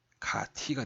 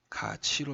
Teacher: 자, 그래서 이 t가 치로 바뀌죠. 이 이모음이 티읕에 영향을 끼쳐서 구개음인 치읓으로 바뀐다